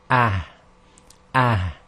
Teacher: However, with the ha in Arabic, there's a little bit more emphasis of the sound coming from what they say the chest. Although it originates from the throat, there's a sort of pulling of air from the chest. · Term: soft ha